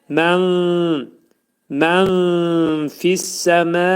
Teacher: Nun hərfinin üçdə bir hissəsi fənin məxrəcində gizlədiləcək. · Nun hərfinin 1/3 hissəsi fənin məxrəcində gizlədiləcək. Fənin məxrəci isə hardadır? Yuxarı üst dişlə alt dodağın arasında olacaq. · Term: İxva